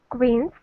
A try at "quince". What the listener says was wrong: Right.